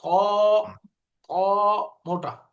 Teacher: তয়ের উচ্চারণের সময় মুখ ভরে যাবে, মোটা হবে, জিহ্বাটা একটু সরু হয়ে যাবে।